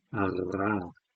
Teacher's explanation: the uvular trill, that's with the back of the tongue and the uvula. So this is, in this case, the uvula, which is kind of the lighter element of that system, is probably the bit that's moving.